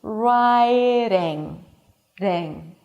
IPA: ˈraɪɾɪŋ